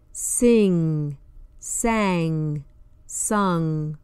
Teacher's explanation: made at the back of the mouth with the back of the tongue touching the back of the mouth the g is silent as in the word Singh sang sung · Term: the sound of NG